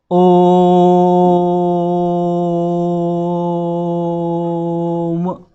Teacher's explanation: आपने ओ को खींच के बोला थोड़ा सा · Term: दीर्घ स्वर